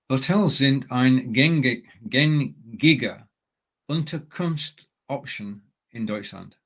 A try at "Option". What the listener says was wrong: Now, you just made the one common mistake of reading option and therefore reading it in English. Option, that's it. So we've got 2 words there, Unterkunft and Option. And putting them together, we need the S so that it can flow as one word. So Unterkunftsoption.